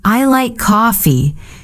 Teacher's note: Your voice falls at the end.